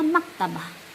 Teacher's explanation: Orang Arab bercakap, dia tak sebut baris hujung tu. Dia wakafkan maktabah.